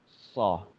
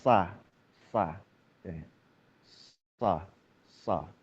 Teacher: Huruf tebalnya huruf shad itu adalah bagaimana mengarahkan vokal itu membelok ke atas, gitu kan ya. Membelok ke arah langit-langit mulut. So. Andaikan tipis jadinya sa.